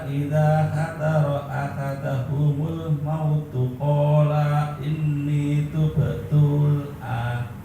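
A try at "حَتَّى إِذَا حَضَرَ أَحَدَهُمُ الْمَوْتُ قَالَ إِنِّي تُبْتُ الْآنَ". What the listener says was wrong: Jangan hadaro, hadoro harusnya.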